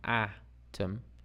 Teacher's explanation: So we have that wide open A sound, atom.